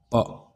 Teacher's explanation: यह होठ को ओष्ठ कहते हैं। तो होठ से बोलना है और स्पष्ट प्रयत्न दोनों होठों को मिला के छू करके बोलना है।